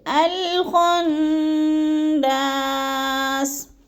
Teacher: یعنی حمزہ کے اوپر زبر لگا کے الخناس پڑھیں گے، اور نون مشدد کو سختی اور جماؤ کے ساتھ پڑھیں گے